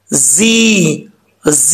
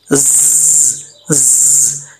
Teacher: जा में सीटी आएगी, सीटी के साथ पढ़ा जाएगा जी जी, ये वाली आवाज़ आनी चाहिए ज, ज, ये आवाज़ आएगी तो ये सही तरीके से सीटी इसमें पढ़ी जाएगी।